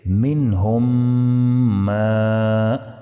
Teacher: میم ساکن کے بعد اگر میم متحرک آ جائے تو میم ساکن کو میم متحرک میں ادغام کر کے غنہ کے ساتھ پڑھیں گے